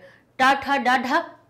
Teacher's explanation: टा ठा डा ढा मूर्धा में टकरा रही है जीभ